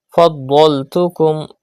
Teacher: Pronounce dod with thicker voice because it is a musta'liya letter.